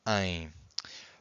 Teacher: This ein that you can hear, it's the nasal sound of the E. So it's this M that is making this E nasal, ein.